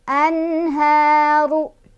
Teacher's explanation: Ru-nya dibaca secara tafkhim karena ro-nya berbaris dhammah. Jadi otomatis ya ini ru dibaca tebal. Anharu kha-nya mad tabi'i karena ada fathah berdiri di atas huruf kha, dibaca panjang 2 harokat.